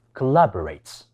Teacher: 協作讀成▁collaborate，▁但係第1同第3音節係要弱化成為▁schwa ，▁應該讀成▁k▁同▁b。成個字應該讀成▁collaborates。廣東話使用者的第一語言確實會顯著地影響他們準確發出英語schwa話音的能力，因為廣東話的語音系